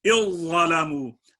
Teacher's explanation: جیسے ذال جب ضا میں ملے گی، اِظَّلَمُوا، اب ذال کی کوئی ہمیں خوشبو نہیں آ رہی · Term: ادغام تام